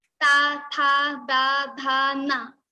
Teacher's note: for ta varga to produce all these elements in the ta varga, we have to use our teeth. So our tongue goes to our teeth.